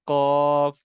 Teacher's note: زبان اس کوے کے قریب جا کے اوپر لگتی ہے